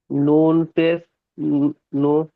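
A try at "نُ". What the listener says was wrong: নুনের টান দেন শোনা ভাই, নুনের টান দেন।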